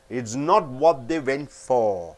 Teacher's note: all the T's are held up